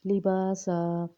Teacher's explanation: لباسا، با میں الف مدہ ہو رہی ہے، سا میں الف مدہ ہو رہی ہے، مد لازم ہو رہی ہے یہاں پہ، لیکن سمپل ہم نے یہ سمجھنا ہے کہ یہاں پہ 5 یا 6 الف کے برابر لمبا کریں گے۔ وقف سے پہلے اگر الف مدہ، واو مدہ یا مدہ میں سے کوئی مدہ آ جاتی ہے تو وہاں پہ 5 یا 6 الف کے برابر لمبا کریں گے۔